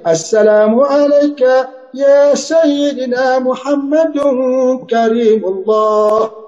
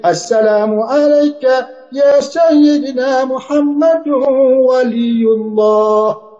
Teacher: Ikhfa tu dia ada dengung. Dia ada dengung selepas pada dia punya tanwin tu. Jadi di situ boleh didengungkan.